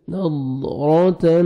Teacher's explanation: نظرتن تا کو باریک پڑھنا ہے اور نون مشدد ہے, غنہ کریں گے